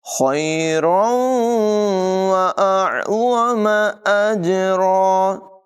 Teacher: یہاں تنوین کے بعد واو حروف ارمالون میں سے ہے، ادغام ہوگا، غنہ کر کے پڑھیں گے